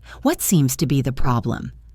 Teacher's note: The key stress falls on seems and problem.